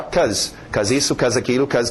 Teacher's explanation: depois em pronúncia rápida nós vamos ver o be sumir.